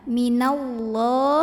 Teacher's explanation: Ada lam pada lafaz Allah atau lam jalalah yang bunyinya tafkhim ya. Kenapa? Karena huruf sebelumnya nun barisnya di atas fathah.